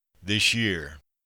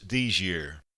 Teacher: As commonly pronounced, this here becomes a single word, somewhat like this year